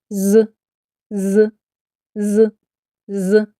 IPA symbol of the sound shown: з